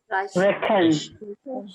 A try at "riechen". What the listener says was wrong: No, it's IE. Riechen. Riechen.